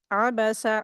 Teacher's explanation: आइन हरूफ हल्की है। हलक से अदा करेंगे।